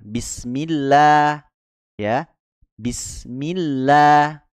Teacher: kalau lafaz Allah didahului kasrah maka ditipiskan